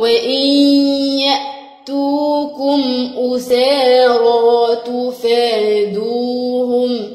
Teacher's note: النون مع الياء هيدخلوا ببعض، يعني يحصل هنا إدغام